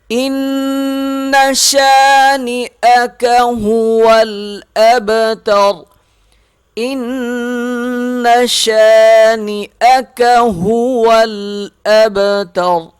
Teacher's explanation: یہاں پر نون پہ تشدید ہے، غنہ کیا جائے گا، شین کو ایک الف کے برابر ہم کھینچ کے پڑھیں گے، با پہ قلقلہ کریں گے، آخر میں وقف پر را موٹی پڑھیں گے۔